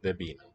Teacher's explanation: So again, the N and the P, voiceless, they fuse into a B.